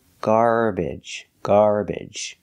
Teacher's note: you can also pronounce it with the short e like eggs and bed